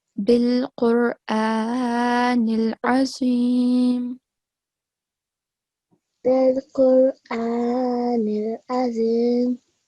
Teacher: So I just corrected you here because we have vertical fatha. Okay, fatha ishbaya on top of alif, and we have to prolong it for 2 seconds